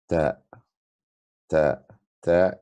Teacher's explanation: Pronunciation like t in English. The tip of the tongue and the root of the two upper central incisors.